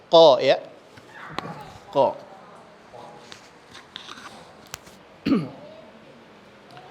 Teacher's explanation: Jadi dia pangkal lidah, tempelnya ke tenggorokan, istilahnya tenggorokan dalam atau langit-langit atas. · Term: huruf qaf